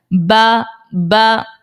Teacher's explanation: پھر اس کے بعد با جو ہے یہ جب ہمارے دونوں ہونٹ ہیں نا، ان کا جو تر والا حصہ، جو گیلا حصہ ہوتا ہے، وہ اگر آپس میں ملتے ہیں تو وہ با نکل آتا ہے. جیسے آپ پڑھیں با، جو ہمارا تر حصہ ہے وہ حصہ آپس میں مل رہا ہے، اٹیچ ہو رہا ہے، تو پھر با نکل آتا ہے.